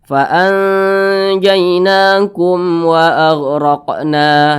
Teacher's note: Selain daripada itu, apabila ada mem sukun berjumpa dengan huruf selain daripada 2 itu ya, mem sukun di depannya berjumpa selain daripada huruf ba, selain daripada huruf mem, maka namanya adalah izhar syafawi. Maka mem sukun ini berjumpa dengan huruf wa, maka namanya izhar syafawi. Dibaca jelas, tidak berdengung.